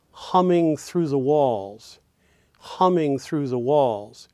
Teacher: hum and walls will go in stressed positions in the bar and Ming through the Ming through the will go in unstressed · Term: stressed syllables